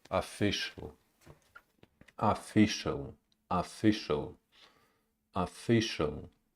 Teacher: Schwa, the first syllable is unstressed.